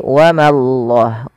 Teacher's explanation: Jangan wa mallah, tapi wa mallah, ma tipis, Allahnya tebal